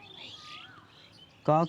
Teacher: का वर्ण का जो उच्चारण स्थान होता है वो कंठ होता है